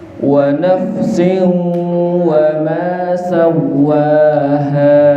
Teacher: Nafsin ketemu dengan huruf waw. Nama bacaannya idgham bi gunnah, masuk dengan mendengung.